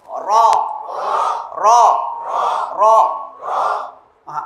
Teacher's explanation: একটা সিফাত হচ্ছে তাকরার। তাকরার মানে হলো একটু কম্পন সৃষ্টি হবে।